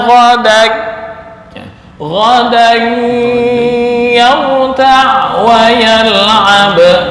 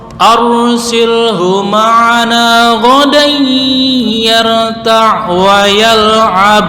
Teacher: untuk ghadan ini ada tanwin bertemu ya itu masuk ke khoisyum ya